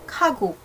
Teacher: So, pag narinig nyo siya, yung sa second dito, yung sa second syllable na to, is, di ba, ito rin siya. Pero pag binigkas ko siya, parang hindi na siya aspirated or wala na siyang hangin.